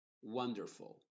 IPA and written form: ˈwʌndərfəl (Wonderful)